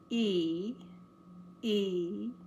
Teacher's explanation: The teeth are almost touching and the tongue is flat but high. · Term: letter E